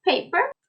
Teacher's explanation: the first p should contain air but not the second